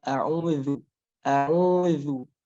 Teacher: zal ini dia tempatnya di ujung lidah, ya, ujung lidah mengenai gigi seri atas. Maka sedikit dikeluarkan kita untuk mengenai gigi seri atas tadi.